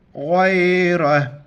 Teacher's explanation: جب وقف کریں گے چھوٹی توا کی وجہ سے غا اور را کو موٹا کر کے پڑھیں گے